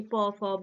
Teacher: শুধুমাত্র ঠোঁট দুটি কাজে লাগছে শ্বাসবায়ু বার হয়ে আসছে মুখবিরের মধ্যে কোথাও স্পর্শ না হলেও ঠোঁট দুটি পরস্পর বাঁধা হয়ে দাঁড়াচ্ছে তাই না তো ঠোঁট দুটিকে এর মধ্যে বাঁধা হয়েই তবে উচ্চারিত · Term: স্পর্শ ধ্বনি